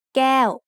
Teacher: Adding the tone mark ไม้โท above the consonant makes แก้ว with a falling tone